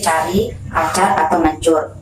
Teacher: Konsonan Afrikat palatal C itu dilafalkan dengan daun lidah ditempelkan pada langit-langit keras dan kemudian dilepaskan secara perlahan sehingga udara dapat lewat dengan menimbulkan bunyi desis